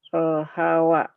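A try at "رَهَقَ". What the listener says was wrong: Rohawa. Rohako. Itu mah bukan wau. Kop.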